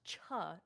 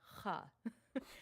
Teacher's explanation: I think it's a velar fricative